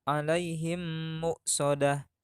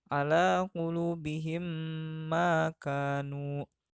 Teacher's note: cara membacanya yaitu mim sukun dimasukkan atau digabungkan dengan mim di depannya dan berdengung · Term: idgham mimi